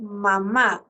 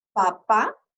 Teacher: el sonido de la M, es sonoro, porque las cuerdas vocales entran en contacto para producir la M. Si ustedes, por ejemplo, pongan su mano a nivel de su garganta, bien pegadito, y si decimos mamá, vamos a sentir que vibra, porque nuestras cuerdas vocales entran en contacto para la producción del sonido de la M.